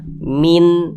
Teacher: bunyi Nun sukunnya kita baca jelas Min nah Min bunyi nunnya tuh jelas jelas berbunyi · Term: izhar halqi